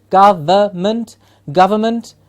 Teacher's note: please remember the N in the middle silent